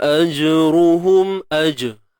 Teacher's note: jim ada lantunan qalqalah sughra. Lantunan yang ringan ataupun lemah lah, kecil.